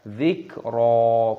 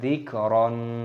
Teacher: Dzikra, ro-nya berharokat fathah tanwin, ada tanda alifnya mad tabi'i, maka ketika berhenti tanda waqaf maka dibaca mad iwad, kita baca dzikra, bukan dzikron